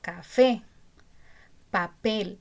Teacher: Porque el acento está en la última sílaba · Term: agudas